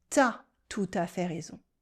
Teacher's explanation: in spoken French we cut the U in tu